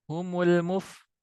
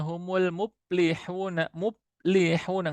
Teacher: fa itu punya sifat mengalir nafas ya, mengalir suara, hamas dan rokhawah. Kemudian dibaca humul muplihuna, muplihuna nggak ngalir karena makhrajnya pun salah.